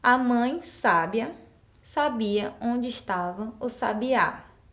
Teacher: Então, percebam aí que é um som aberto das vogais A e eu tenho um significado diferente em cada uma dessas palavras.